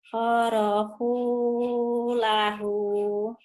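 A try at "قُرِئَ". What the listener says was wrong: Khoroku bukan horohu. Khoroku. Khoroku. Kuku. Ini bukan hu, ini kop. Bukan horohu. Horoku. Kuku. Ku. Ini ku. Khoroku lahu.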